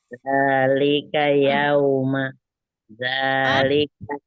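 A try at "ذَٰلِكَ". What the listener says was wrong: Masuk. Zalikal. Lamnya masuk.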